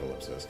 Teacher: the stress on the second syllable is very strong and preceded by a glottal stop